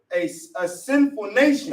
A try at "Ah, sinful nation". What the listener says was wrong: No, they ain't say a sinful nation. What is it saying? Ah, sinful nation. Yeah, you got to read it like that.